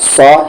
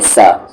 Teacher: صاد پہ زبر سو، ہیوی کریں گے، سو نہ کہ سا